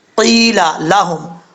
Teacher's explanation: الف ہے، 1 الف کی مقدار لمبا کریں گے، قِيلَ لَهُمْ، قاف حروف مستعلیہ میں سے پر پڑھا جائے گا ، یا مدہ ہے، 1 الف کی مقدار لمبا کر کے